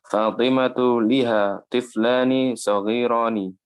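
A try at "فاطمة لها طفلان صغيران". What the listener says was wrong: Liha khata. Kalau kemasukan domir bukan liha, ya, laha. Kalau kemasukan domir, baik domir huwa atau hiya, ini domir hiya ini, laha bacanya.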